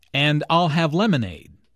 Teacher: stresses I'll and lemonade to emphasize her choice.